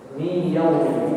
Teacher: Nunnya akan hilang. Maka seakan-akan aku membaca huruf ya yang bertasydid. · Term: idgham